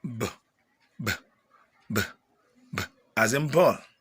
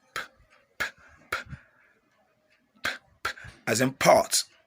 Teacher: bilabial sound that fall within the articulation of the two lips, like b, b, b, b, as in ball.